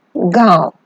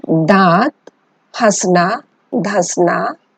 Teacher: इसका उच्चारण नाक और मुंह दोनों से होता है। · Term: अनुनासिक